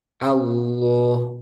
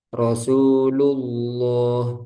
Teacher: Lafzul jalalah Allah ketika sebelumnya huruf dhammah, huruf yang berharakat dhammah itu dibaca tebal, dhammah atau fathah. Allah, nah itu kan tebal.